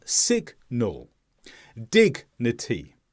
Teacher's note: Here we have G followed by N, but we do pronounce the G because the G comes at the end of one syllable and the N starts the next one.